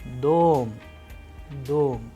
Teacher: in the word dom, the sound of O is higher than the rest of the letters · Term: stress